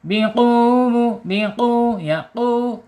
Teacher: Masukin ke e pangkal lidah dulu ya. Diceklikin dikit ya biar beda sama sama huruf kaf. Biqu penekanan di huruf wawu yang bertasjid.